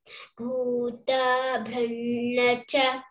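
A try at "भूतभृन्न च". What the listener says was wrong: Don't say bhuta. Yeah, there is no bar upon ye, isn't it? Bhuta. It is short vowel. Bhuta bhrunnacha.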